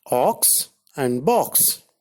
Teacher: O is a back unrounded vowel just above the open position.